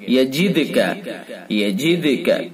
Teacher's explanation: یجدک دال کے اندر قلقلہ کریں گے